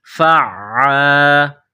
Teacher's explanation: فعال، فا کے اوپر زبر ہے، اس کے بعد عین، گلے کے درمیان سے عین کو نکالا جاتا ہے